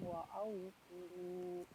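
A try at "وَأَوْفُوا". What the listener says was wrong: Wa aufu au. ya, tadi terdengarnya mengarah ke ain ya, wa aufu gitu. Disempurnakan ke tenggorokan bawah aja. Au gitu ya. Au gitu ya biasa.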